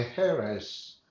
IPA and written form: ˈeə.res (heiress)